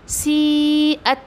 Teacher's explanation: ता पर हम्स करना है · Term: ता का हम्स